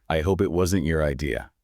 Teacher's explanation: The words I and it are function words. They get squeezed so tightly into the valleys that you barely hear them. >> They're robbed their acoustic energy.